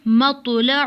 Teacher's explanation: تا ساکن ہے، اس پہ جھٹکا بالکل بھی نہیں کریں گے۔ اور طا کی آواز موٹی اور جھٹکے والی ہوتی ہے